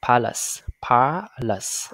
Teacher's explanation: Phụ âm l mới xuống, e không được nhấn chuyển về ơ, ce luôn chuyển thành s ha.